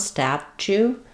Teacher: So in statue, this T-U is more of a CH sound